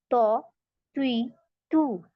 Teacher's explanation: पीछे से जबान उठानी होती है तो इसको मोटा पढ़ा जाता है मुंह भर के